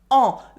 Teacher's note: it is pronounced o the french nasal vowel